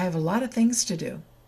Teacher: The vowel sounds will change the t, the t, to a d.